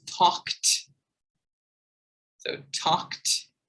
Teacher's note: T sound, because the K sound is unvoiced.